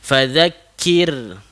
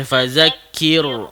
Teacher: Kir baris di bawah bertemu dengan huruf ra bertanda sukun, dibaca dengan nyipih